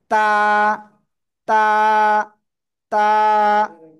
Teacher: জিহ্বার আগা সামনের উপরের দুই দাঁতের গোড়ার সাথে লাগাবো, লাগিয়ে এক আলিফ টেনে পড়বো। জিহ্বার আগা সামনের উপরের দুই দাঁতের গোড়ায় লাগিয়ে এক আলিফটা নিয়ে উচ্চারণ করব। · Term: তা অক্ষরটা